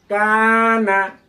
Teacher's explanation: নুনটাই যে জিহ্বার আগা তার বরাবর উপরে তালুর সঙ্গে লেগে যাবে